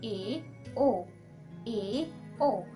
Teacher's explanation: आपका मुख पहले यानी समृद्ध स्वर की अपेक्षा ज्यादा खुल रहा है अर्ध समृद्ध स्वर में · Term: अर्ध संवृत्त स्वर